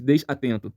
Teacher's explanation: essa primeira sílaba eu não falo desatento ele é desatento desatento eu não tenho um bloqueio uma pausa depois do S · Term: ligação